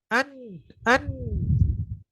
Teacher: Udara suara masuk ke hidung ketika kita tutup dan kita wakafkan nunnya tadi, atau kita tasydidkan nunnya tadi, suaranya tidak keluar. · Gunnah itu, dengung itu dalam bahasa Arab adalah as-saut yakhruju minal khayshum. Suara yang keluar dari rongga hidung.